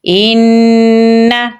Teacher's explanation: حمزہ کو نون کے ساتھ ملائیں گے کیونکہ نون کے اوپر تشدید ہے اور غنہ کریں گے تو پڑھا جائے گا ان۔